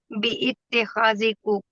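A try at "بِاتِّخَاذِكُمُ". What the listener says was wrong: बी इतना नहीं, ये तो हमजा वसल है ना, ये तो गिर जाएगा ना। बित्ता खाजिकुम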